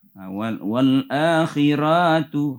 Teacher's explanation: Wal akhiratu ranya pendek ya, jangan dibaca panjang